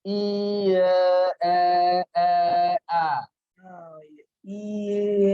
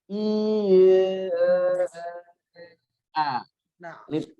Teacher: Lidah bergerak ke bawah, mulut makin kebuka, maka itu akan mengubah suara dari I ke A.